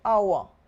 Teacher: when you are speaking this word you do not sound out this h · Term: silent